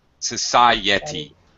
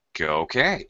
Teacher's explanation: even though those are two vowel sounds next to each other we separate them